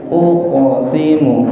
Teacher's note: Qalqalah qaf, sebagaimana yang kita tahu bahwasanya qalqalah niku mantul nggih, mantul. Dipantulkan.